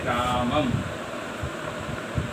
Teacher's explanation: विसर्ग का उच्चारण ह इसके माध्यम से बोलते हैं, जैसे रामः बोलते नहीं बोलते रामः इस प्रकार से उच्चारण करते हैं। और अनुस्वार का जब उच्चारण करते हैं तो ये म की ध्वनि में आती है